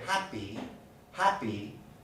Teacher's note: the next vowel is not stressed so i say happy happy there's no burst of air